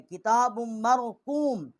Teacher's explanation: با کو میم کے ساتھ مشدد کیا ہے اور یہاں غنہ کیا ہے